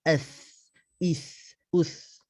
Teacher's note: Dan us itu sahaja yang perlu untuk kita muncung. Kalau as tak perlu kita muncung.